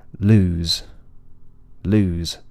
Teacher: The Zed is only partially voiced